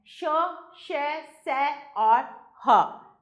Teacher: इनका उच्चारण करते समय वायु कंठ से निकलकर किसी स्थान पर रगड़ खाकर बाहर निकलती है। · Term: ऊष्म व्यंजन